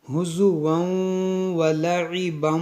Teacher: یہاں پر تنوین کے بعد میم ہے تو یہاں پر بھی ادغام ہوگا۔ ہزوا، ناک میں آواز جائے گی